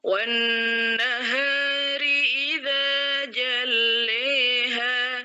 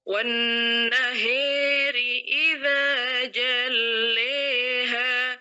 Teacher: dengan bacaan Ad-Duri Al-Kisai yang ada imalah pada zawatur ra. Wan nahari idza jallaha.